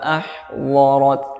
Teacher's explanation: huruf dhad digunakan samping ya, lidah bagian samping, seperti itu. Alimat nafsum ma ahdarat fala qafnya mantul, fala uqsimu bil khunnas, uqsimu dan uqsimu jangan berhenti, fala uqsimu bil khunnas, nas ya, sinnya sedikit tertahan ketika sukun.